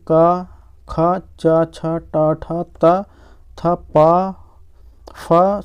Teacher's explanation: इन व्यंजनों का उच्चारण करने में स्वर तंत्र की कंपन नहीं होती है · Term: अघोष